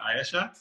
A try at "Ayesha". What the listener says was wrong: Ayesha. It's 2 syllables. Ayesha.